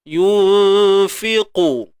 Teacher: Qaf baris depan angkat pangkal lidah. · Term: qaf isti'la